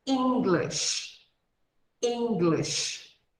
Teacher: no finalzinho aqui, ela vai fazer um som de sh, sh, que nem acontece quando falamos o idioma espanhol, que em inglês é Spanish.